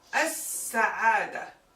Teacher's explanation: We don't hear the lam at all.